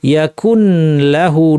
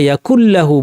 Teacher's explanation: ইদগাম যুক্ত হয়ে যাবে, দুইটা হরফ মিলে একটি হরফ হয়ে যাবে এবং কোনো গুন্না অবশিষ্ট থাকবে না, কারণ এখন আমরা গুন্না ছাড়া ইদগামের কথা বলছি। · নুনের কোনো রেশ মাত্র থাকবে না, শুনে বোঝা যাবে না এখানে নুন ছিল।